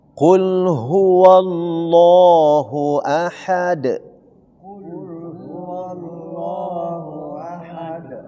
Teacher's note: Dun ini tidak dibaca ahadun tapi ahad menjadi huruf qalqalah karena waqaf. Iya. Karena berhenti. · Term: qolqala qubro